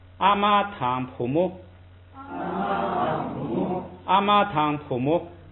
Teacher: 把两个东西连起来，所以呢，妈妈跟女儿这样的话，中间呢读轻声